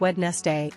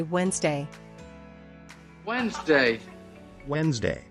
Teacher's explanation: pronunciation one pronouncing Wednesday as wedness day instead of Wednesday fix skip the D and just say Wednesday